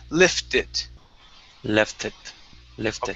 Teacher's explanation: it'll be a uh what's called a flap t into the word it